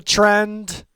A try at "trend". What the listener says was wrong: It really sounds like you're saying Trent.